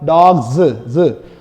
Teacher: ये ग साउंड जो है ये वॉइस्ड साउंड है। वॉइस्ड साउंड कौन से होते हैं, आपको पता है कि sounds which are produce with the vibration of vocal फोर्ड, जहां पर हमारे वोकल कॉर्ड्स होते हैं।